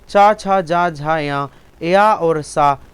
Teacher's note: ये तालु से बोले जाते हैं